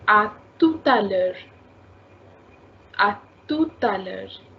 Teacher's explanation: after tout, you are having a vowel. So you need to take the liaison